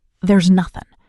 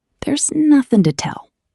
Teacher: They smash the words together. The S sound at the end of there's slides directly into the word nothing, creating one smooth piece. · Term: connected speech